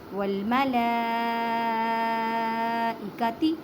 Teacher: لام کے پر بڑی مد ہے اور کھڑی زبر ہے، 6 الف کی مقدار میں کھینچ کر پڑھیں